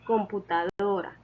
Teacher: La sílaba tónica de computadora es do, porque en ella recae la mayor fuerza de voz al momento de pronunciarla.